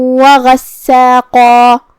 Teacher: کلمت غساقہ میں یہاں حرف الغین کو ہم حلق کے اوپر والے حصے سے پڑھیں گے اور اسے بھاری آواز میں بھی، کیونکہ غین حروف التفخیم میں سے ہے جو کہ سین پہ تشدید ہے، لہذا تشدید کا دھیان رہے.